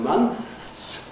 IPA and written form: mʌnθs (months)